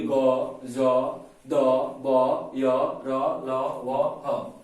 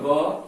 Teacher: स्वर तंत्रिया उसमें कंपन होता है, वाइब्रेशन होता है